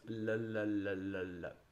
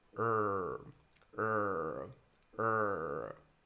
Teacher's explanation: The tongue for the R needs to be up, tense, and really pushing to the sides.